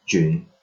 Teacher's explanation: this is a voice sound, meaning that there is a little vibration here on the vocal cords